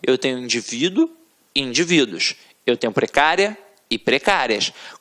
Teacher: reparem que a sílaba tônica está na penúltima sílaba portanto é uma paroxítona e é uma paroxítona terminada em ditongo Não importa se ditongo